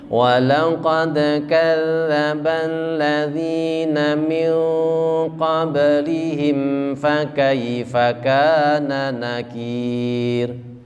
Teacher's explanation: Qaf itu sifatnya tebal, maka ketika ikhfa itu nunnya langsung menuju ke tebal.